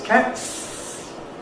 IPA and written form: kæts (cats)